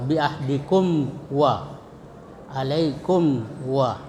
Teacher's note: Cara membacanya ya mim disuarakan dengan terang dan jelas di bibir. Jadi bibir ketemu antara atas dan bawah karena tertutup ya. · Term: izhar syafawi